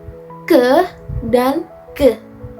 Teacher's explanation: Next ada velar, yaitu lidah menyentuh langit-langit lunak atau velum